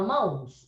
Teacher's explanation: Só que você não fala mãos, você fala mãos. O O tem som de U. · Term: semivogal